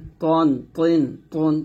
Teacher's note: জিহ্বার আগার সামনের উপরে দুই দাঁতের গোড়ার সঙ্গে লাগিয়ে বাংলায় ত এর মতো মোটা আওয়াজ উচ্চারণ করতে হবে।